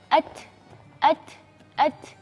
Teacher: Tapi apa yang membedakan huruf ta, yaitu sifat-sifatnya, yaitu diantaranya sifat yang istimewa di huruf ta itu adalah sifat berdesis